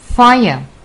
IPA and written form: faiə (fire)